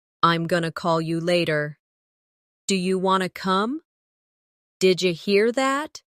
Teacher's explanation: going to becomes gonna, want to becomes wanna, did you becomes didja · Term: reductions